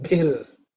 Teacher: This bhir is again fourth letter in the pa varga, so it has to be aspirated.